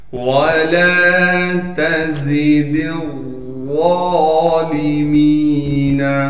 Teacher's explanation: واو کو بغیر کھینچے پڑھنا ہے، لام کو ایک الف کے مقدار کھینچیں گے، تا کو باریک کر کے پڑھیں گے، زام میں تھوڑی سی سختی سے ادا کریں گے۔